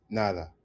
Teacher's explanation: in Colombian Spanish the D between vowels gets very soft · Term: soft D